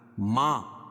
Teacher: کھڑا زبر قائم مقام الف مدہ کے، اس کو ایک الف کے برابر کھینچ کے پڑھیں گے